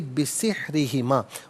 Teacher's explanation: را کے نیچے زیر ہے، را کو باریک کر کے پڑھا جائے گا